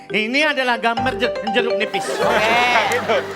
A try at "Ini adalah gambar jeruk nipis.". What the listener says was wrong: Ngomongnya benar tapi nggak usah diteken-teken gitu Pak.